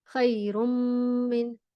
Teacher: whenever the meme has a shadda, you always hum and stretch, and it tickles in your nose